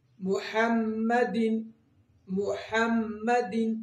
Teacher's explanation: میم مشدد آ گئی، یہاں پہ بھی غنہ ہوگا، 2 سیکنڈ کے لیے ناک میں آواز رہے گی